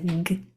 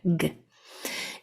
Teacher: The hard sound for G is that kicking motion from the back of your tongue against the back of your throat. It's a g. G, a very quick, fast, hard sound, G. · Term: hard sound of G